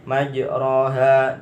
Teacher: Maj bacaan qalqalah sughra sebab huruf qalqalah mati asli. Majroha dibaca majreha bacaan imalah artinya condong